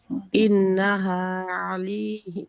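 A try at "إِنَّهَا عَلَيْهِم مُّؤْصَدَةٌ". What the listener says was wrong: ইন্নাতে সময় দিতে হবে, ইন্নাতে সময় দিতে হবে। নুন এবং মিম এটাতে যখন সাদ্দা হবে তখন আমরা সময় দিব। ইন্নাহা।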